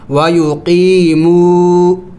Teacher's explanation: یائی مدہ اور یہاں پہ واو مدہ ہے تو دونوں کو لمبا کرنا ہوتا ہے